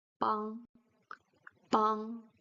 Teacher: It's a nasal sound. It blocks, it stops on the nose.